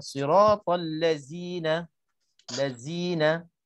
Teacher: Bila kita tak keluar lidah, dia automatik dia akan bertukar huruf zai. Maka perkataan al-lazina dengan huruf zai dah menyalahi huruf yang sebenar, sifatnya dan makhrajnya.